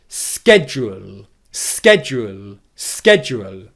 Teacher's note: You will often hear this word schedule being pronounced instead of a sh sound at the beginning with a sk pronunciation instead. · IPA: /ˈskedʒ.uːl/